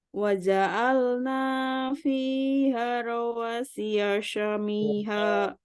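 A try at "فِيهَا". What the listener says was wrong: Fiha, ha panjang.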